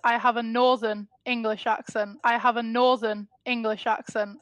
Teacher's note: Yes, she stresses not accent, but Northern.